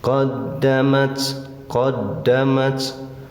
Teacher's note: Dal ditasdid tekan tahan ya tapi jangan terlalu menekan